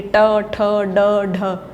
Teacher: ठ है हमारा मूर्धन्य, जो जीभ है वो जो ऊंचा जो पीक पॉइंट है मुख में, वहाँ पर टच होती है, ट, ठ, ड, ढ, तो ठ मूर्धन्य है।